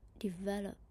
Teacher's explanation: the middle syllable needs to be louder, longer, higher than the others